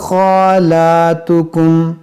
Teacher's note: खा पर खड़ा ज़बर है, लाम पर खड़ा ज़बर है, ये दोनों को खींचेंगे एक अलिफ